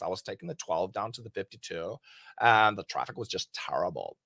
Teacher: There's a lot of vocal fry, but they actually really do talk like this